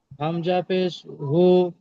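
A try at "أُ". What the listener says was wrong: হামজা শুরু থেকে পড়লো শুনতে পাননি আপনি উমজা পেশ হু নয় হামজা পেশ উ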